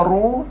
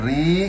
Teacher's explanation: Kalau ra' ru tebal, kalau ri kasrah nipis.